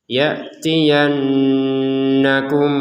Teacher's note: Mim sukun bertemu mim. Kita masukkan mim yang pertama kepada mim yang kedua. Kemudian disertai dengungan ya.